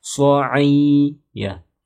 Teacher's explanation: Karena mad tabi'i itu panjang sedikit ya, dua harokat.